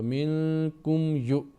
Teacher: اخفا ہوگا، پھر اخفا ہوگا نون ساکن کے بعد کاف، منکم، میم ساکن کے بعد یا ہے تو میم ساکن کا اظہار ہوگا